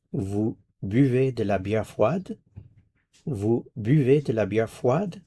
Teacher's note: The only thing that you have to do is adjust your intonation in French. It should rise towards the end. · Rising intonation, and there you have the question.